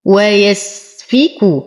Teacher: نصبر على السين نعطيه الهمسة والرخاوة، نتم كسرة الفاء وضمة الكاف